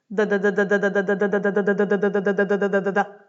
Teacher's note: sentir le bout de ta langue taper rapidement contre le palais. Ça va être un facteur essentiel pour arriver à prononcer ce fameux Roulé.